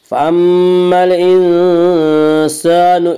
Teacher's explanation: فأما الإنسان، الانسان الف مدہ، الف میں شا مدہ ہوتا ہے، الف سے پہلے میں شا زبر ہوتا ہے، الف مدہ کو 1 الف کے برابر کھینچ کر پڑھیں گے